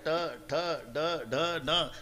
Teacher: वरच्या टाळूला जेबेचा स्पर्श आहे. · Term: तालवे